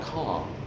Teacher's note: It goes low and back.